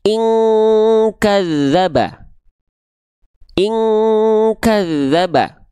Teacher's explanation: nun sukun ketemu kaf, baru di sini dia dilafalkan dengan bunyi dengungan seperti ang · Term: ikhfa